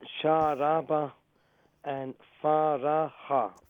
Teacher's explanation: You make the sheen long, and you make the ra long as well.